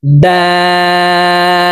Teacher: দাল হরফকে তিন আলিফ টেনে পড়তে হবে